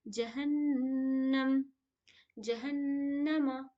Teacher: یہاں پہ نون میں تشدید ہے، ہم یہاں پہ کیا کریں گے؟ غنہ کریں گے